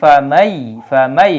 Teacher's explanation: দেওয়া হয়েছে ইদগাম করার জন্য এজন্য আমরা পড়ি কি ফামাই ফামাই নুন সাকিনের উচ্চারণ হয় না